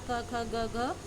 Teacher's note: बोलते समय जीभ का पिछला हिस्सा मृदु यानी कोमल तालु से स्पर्श करता है, इसलिए इन्हें हम कंठ या वर्गी व्यंजन भी कहते हैं।